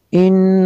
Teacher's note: ان نون مشدد ہے، یہاں پہ غنہ کریں گے۔